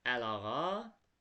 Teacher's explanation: Baxın i düşdü a uzanmadı əlağa.